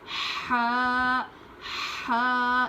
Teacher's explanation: इसकी आवाज हलक से निकलनी चाहिए।